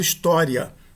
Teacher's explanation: o segundo i da palavra história é igualmente uma semivogal. Ele é breve, bastante breve e se apoia na no a para poder eh ser proferido.